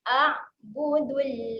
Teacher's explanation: Bunyi huruf ain ketika mati jangan ada lantunan, tahan saja.